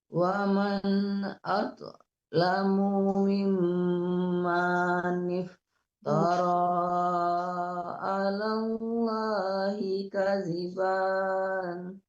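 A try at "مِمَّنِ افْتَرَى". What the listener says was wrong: Ya, mim manif, manya jangan dipanjangkan ya Bu. Mim manif, jangan mim manif, nggak boleh panjang manya.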